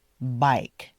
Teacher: if you don't pronounce the long I correctly, it could sound to someone like bake.